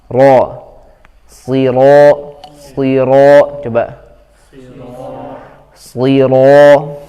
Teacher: Kalau ro tipis, ini saja yang naik ujung lidahnya, tapi kalau ro tebal ujung lidahnya naik, karena makhraj ro itu di ujung lidah ketemu dengan langit-langit bagian depan, ya, dari mulut. Nah, kalau ro tebal ininya naik, ini juga naik ke atas, gitu, sama-sama naik.